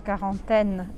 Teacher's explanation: Agora aqui, quarantaine, eu não posso falar o U. E esse AN tem um som mais fechado, quarantaine, e o E não se pronuncia no final.